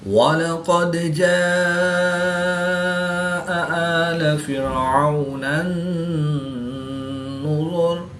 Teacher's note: الف سے پہلے جیم پر زبر ہے تو الف مدہ کے بعد حمزہ اسی کلمے میں ہے تو یہاں پر مد متصل ہوگی، 3 سے 5 الف تک کھینچ کر پڑھیں گے۔ واو ساکن سے پہلے عین پر زبر ہے تو واو لین، اس کو لمبا نہیں کریں گے۔ · دال ساکن ہے اور یہ حروف قلقلہ میں سے ہے، تو یہاں پر ہم قلقلہ خوب ظاہر کریں گے، یعنی قلقلہ صغریٰ کر کے پڑھیں گے۔